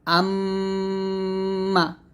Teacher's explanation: এক থেকে দুই আলিফ পরিমাণ টান দিয়ে গুনাটা আদায় করবে